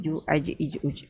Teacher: Ismat sebab mahrajnya di tengah lidah. Kita perlu bawa lidah yang tengah tu ke atas. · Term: huruf jim